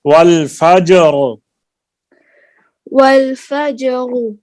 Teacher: جیم کو سخت نہیں کریں، جیم کو نرم رکھیں اور را کو بھی بعد میں ادا کریں